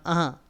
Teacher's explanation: अनुस्वार का उच्चारण अह, तो मतलब नासिका से होता है